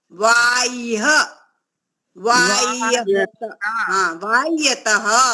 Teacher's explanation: तो यहाँ पर जो ह है वो आधा है, उसको हमें य के साथ में मिला के बोलना है।